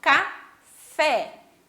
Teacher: então, café, última sílaba mais forte, oxítona.